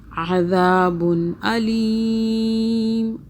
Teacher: عین کو حلق سے، دال کو سافٹ پڑھنا ہے